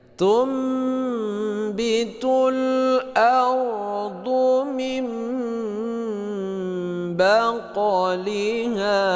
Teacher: Ini nun mati bertemu dengan ba. Nah, ini dinamakan dengan iqlab. Artinya membalikkan bunyi nun mati kepada bunyi mim.